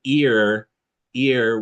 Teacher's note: Ear we would say starts in green tea and then moves towards R.